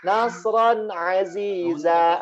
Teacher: Nun sukun atau tanwinnya. Jadi ini tanwin bertemu dengan ain, tanwin di huruf ro-nya dia dibaca jelas, tidak ditahan. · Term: izhar